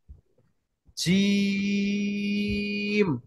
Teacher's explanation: এই জিম শব্দের নিচে দেখুন এখানে তিন লেখা রয়েছে। অর্থাৎ জিমকে তিন আলিফ পরিমাণ টানতে হবে।